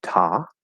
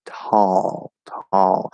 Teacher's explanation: so we have the l colored fifth vowel